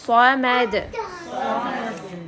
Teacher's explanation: اللہ الصمد، صاد کو تھوڑا سا اور ہیوی بنائیں